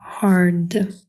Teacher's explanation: дивтонг so Hard Як ви вже здогадалися R подовжує нашу а тому з'являється подовжений звук